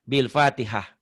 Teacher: Tak marbutoh itu kalau dihentikan bunyinya jadi hak.